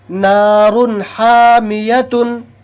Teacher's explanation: ہے، تو اس کو جلدی سے پڑھیں گے ظاہر کر کے، تنوین کو ظاہر کر کے جلدی سے پڑھیں گے